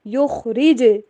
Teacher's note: جیم کے اوپر بھی کلکلا، خا موٹا پڑا جائے گا